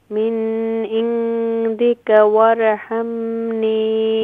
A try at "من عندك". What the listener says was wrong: don't do here غنّة نون ساكن after throat letter عين من عندك نون is don't do here غنّة من عندك وارحمني